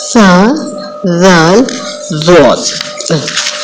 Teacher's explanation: زبان کی نوک اوپر سامنے کے 2 دانتوں کے سامنے کنارے کے ساتھ لگے تو فا، ذال، ضاد، فا، ذال، ضاد ادا ہوتے ہیں